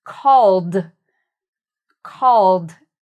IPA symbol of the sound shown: d